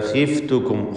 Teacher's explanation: ഖാ ഇസ്തിഅലാഇൻ്റെ തഫ്ഖീം ചെയ്യേണ്ട അക്ഷരമാണെങ്കിലും കസ്റ ആയതുകൊണ്ട് ഏറ്റവും കുറഞ്ഞ തഫ്ഖീമാണ്.